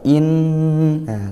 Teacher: tempat keluar ghunah yaitu dari hidung sehingga kita sengau